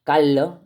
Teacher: la aspiración de la s final o de la intermedia